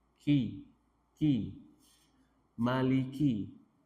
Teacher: Kalau kaf maju sedikit, ki, dan dia memiliki sifat hamas, ada udara mengalir.